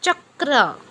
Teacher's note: च छ ज झ चा उच्चार तोंडात जेथे आपण चिंच किंवा चॉकलेट चगळतो त्या भागाला स्पर्श करून केल्यास तो वर्ण तालाव्य असतो